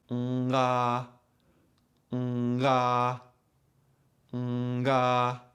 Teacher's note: If you do it too quickly, you will hear the tongue and soft palate moving away from each other, causing a little click, pop, or abrupt transition